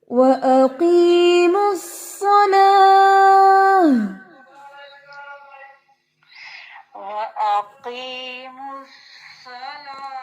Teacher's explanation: لام کو موٹا نہیں ہونے دینا